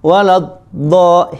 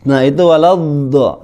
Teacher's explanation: Memanjangkan suara sedikit dari suara dod sukun, jadi harus kedengaran ad, kedengaran ya, ad. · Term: istitolah